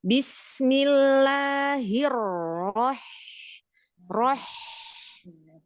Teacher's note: huruf H itu ada pedesnya, bukan ada ngoroknya